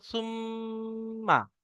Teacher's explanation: সাথে সাথে এটাও বলতে হবে যে মিম এর উপরে তাজদিদ এসছে মিম তাজদিদ নুন তাজদিদকে এক আলিফ পরিমাণ গুন্না করে পড়তে হয়